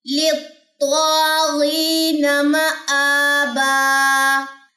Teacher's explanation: میم کی زبر کو لمبا نہیں کرنا، آ کے اوپر کھڑا زبر ہے اس کو لمبا کرنا ہے